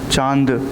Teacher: आपका मुंह और नाक दोनों से आपका हवा बाहर आता है। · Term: चंद्र बिंदी